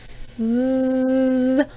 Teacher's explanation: When you turn your voice on with the S sound, you get a Z sound. And that's how you can practice learning to turn the voice on for the Z sound and off for the S sound.